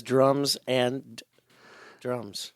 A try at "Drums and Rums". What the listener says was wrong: And no D. The D is silent.